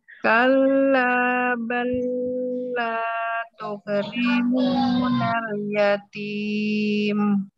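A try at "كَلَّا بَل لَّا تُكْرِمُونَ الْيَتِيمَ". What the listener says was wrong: Kalla ini jangan ditahan. Kalla.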